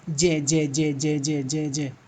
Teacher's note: स्पर्श है, जे जे जे जे जे जे जे, सट रहा है, चिपक रहा है।